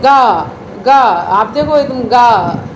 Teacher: एकदम नाद हुआ इसमें, यानी कि आवाज़ सी हुई, कंपन सी हुई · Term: साघोष